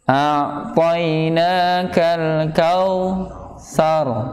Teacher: Jadi ainnya ada di tenggorokan bagian tengah, ya, di bagian tengah.